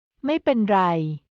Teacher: ไม่ Is pronounced in a high pitch in this expression.